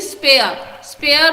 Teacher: ये रॉ वाला sound silent है, रॉ हम प्रोनाउंस नहीं करते हैं।